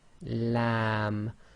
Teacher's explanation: a bit more pressure on the front of the tongue. Back of the tongue is as normal, not it's not raised.